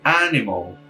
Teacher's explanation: Animal é na cabeça da palavra, e o nosso é uma palavra oxítona, ou seja, a última sílaba é mais forte.